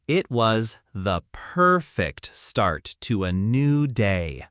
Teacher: You probably raise your voice slightly on start because it's exciting.